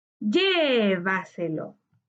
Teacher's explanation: su sílaba tónica se encontraba en la anterior a la antepenúltima sílaba